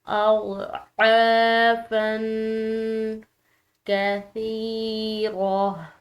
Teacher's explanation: سا آ رہی ہے جو کہ نرم حروف میں سے ہے، اور اس کو پڑھتے ہوئے سختی شدت نہ ہو اور نہ ہی اس کی آواز میں سیٹی کی آواز ہے